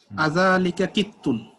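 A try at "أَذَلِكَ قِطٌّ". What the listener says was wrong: আপনি কিন্তু বাংলায় কিন্তু এটা প্রশ্নের মতোই বলেছেন। আরবিটাকে একটু প্রশ্নের সুরে, প্রশ্নের স্টাইলে বলেন।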